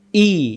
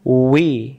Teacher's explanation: হামজা অক্ষর হলকের প্রথম থেকে শক্ত করে পড়তে হয় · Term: হামজা জের ই